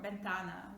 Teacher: they pronounce v just like something in between i would say between v and b or bentana window again it's not a ventana it's not bentan